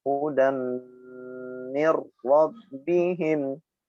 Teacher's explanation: Kemudian hudam harokat tanwin huruf dal bertemu mim maka dibaca dengung idgham bi gunnah. Hudam 2 bibir yang tertutup dan ditahan yang lama sehingga mengeluarkan bunyi dengungnya.